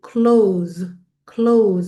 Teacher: you hear a z a z sound there at the end of the word close